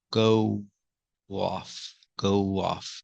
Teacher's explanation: we have two vowels here when you link them you hear the W sound